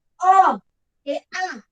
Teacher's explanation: અ કે આ એટલે આ કંઠમાંથી ઉચ્ચારાય છે